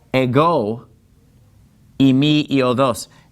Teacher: the word ego, it gets the accent on the second syllable. See, that accent is over the omega.